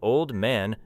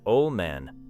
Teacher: The word old may be clear alone, but old man may sound like ol' man.